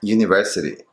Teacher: So the T between two vowels sounds like a D, but really it sounds like the light Spanish R, as in the word pero.